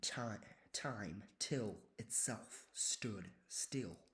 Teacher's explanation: a dental alliteration with T sounds